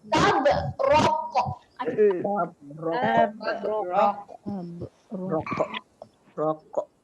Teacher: Jangan bunyikan angin. Kita lantunkan sahaja kita punya pangkal lidah terangkat. Kita tekan sedikit. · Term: huruf Qaf